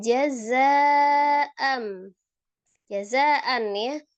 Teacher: Sini ada za-nya mad tabi'i alif bertemu dengan hamzah di dalam satu kalimat. Menjadi mad wajib muttasil